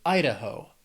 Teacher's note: Has 3 syllables, stress is on that first syllable, Idaho.